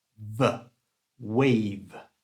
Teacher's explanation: And V is a voiced sound. That means the air goes through your voice box in your throat.